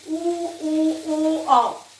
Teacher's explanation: जो गोल गोल बन के आपका स्वर बोलेंगे, ऊ, ओ, औ। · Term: वृत्तमुखी स्वर